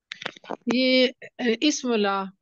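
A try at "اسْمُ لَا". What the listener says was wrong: इस्मुला, इस्मुह, हाँ की आवाज नहीं आनी चाहिए, तसल्ली से हल्का सा बोलिए, इस्मुला, सॉफ्टली बोलें। हाँ जी, ये इस्मुह ला नहीं, ये इसमें हाँ हाँ की आवाज नहीं आनी चाहिए, ठीक है। इस्मुला, बड़े आराम से तसल्ली से बोलें, इस्मुला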